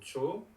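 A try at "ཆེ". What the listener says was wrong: Che, parce que le O devient E.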